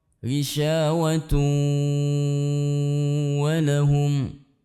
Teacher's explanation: Idgham artinya memasukkan, tanwinnya dimasukkan ke dalam wawu. Bi gunnah artinya disertai dengan mendengung atau ditahan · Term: Idgham bi gunnah